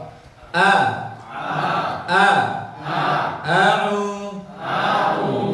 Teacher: Hamzah di bawah, tenggorokan bawah.